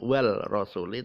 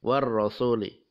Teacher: Alnya tidak terbaca, bukan wal rasuli, tapi war rasuli, diidghamkan. War rasuli, idgham samsiyah.